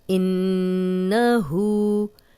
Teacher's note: نون پہ شد آ گئی ہے، یہاں پہ پھر غنہ کریں گے۔